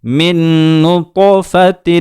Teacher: قلقلہ میں آواز لوٹ کر آتی ہے، یہاں طا کی آواز کو بغور سنیں کس طریقے سے لوٹ کر آ رہی ہے